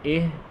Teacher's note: اہ میں ہا نہ جھٹکا دینا ہے نہ لمبا کرنا ہے